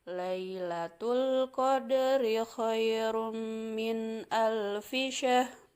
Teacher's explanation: pada kata min ini dibaca harus jelas karena hukumnya idhar. Maka bacaan nun matinya harus jelas.